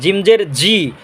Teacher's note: জিম জিহ্বার মাঝখান তালুর মাঝখান